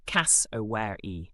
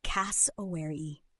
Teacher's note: Aussies say it like this: cass-o-ware-e. Keep the stress right at the beginning on cass and let the rest glide out smoothly.